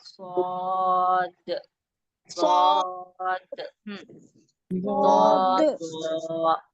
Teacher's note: ये सबसे ज्यादा मोटे और ऊंचे पढ़े जाने वाले हरूफ हैं। इनको सबसे ज्यादा मोटा और खींच के पढ़ना